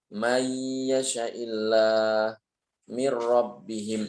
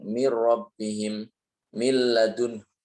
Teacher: Idgham sendiri maknanya adalah meleburkan. Jadi sudah huruf nunnya ini sudah tidak ada, seakan nggak ada.